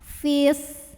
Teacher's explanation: Maka terlepaslah huruf sukun yang pertama yang mad. Jadi kalau wasol fi-nya pendek karena nggak ada madnya, nggak ada pemanjangnya.